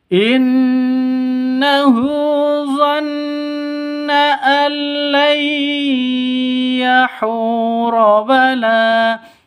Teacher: Cara bacanya masuk ke ya disertai dengung. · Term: idgham bi gunnah